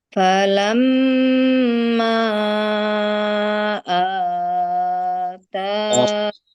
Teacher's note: perhatikan matobenya, a panjang, ta panjang, mim juga panjang di situ ya